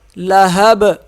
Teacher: ذات لہب، زا نہیں پڑھا جائے گا، ذال پڑھا جائے گا۔ لہب، ہا کو صاف پڑھیں گے، با پہ قلقلہ کریں گے